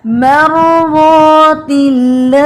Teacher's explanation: را ہیوی بھی ہے، تھوڑا پاز بھی ہے.